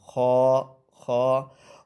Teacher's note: یہ موٹا حروف ادا ہوتا ہے، حروف مستعلیہ میں سے ہے، یعنی کہ پر پڑھا جائے گا خوا خوا۔ اور خواہ میں یہ بات یاد رکھنی ہے، اس میں خراٹے کی آواز نہیں آنی چاہیے، اس طرح کر کے آواز یہ نہ آئے۔